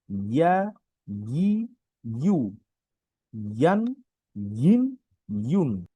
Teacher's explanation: জিহ্বার মধ্যখান তার বরাবর উপরে তালুর সঙ্গে লাগিয়ে উচ্চারণ করতে হবে। আচ্ছা, জিহ্বার তালু, এটা যদি আমি বলি, আমাদের যে জিহ্বা আছে, এই জিহ্বার মাঝখানে যে অংশটা, এটা উপর দিকে লাগিয়ে হয়, ইয়া, ইয়া।